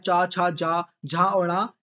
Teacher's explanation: इनका जो उच्चारण होता है वह आपका ताल से होता है। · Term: तलव्य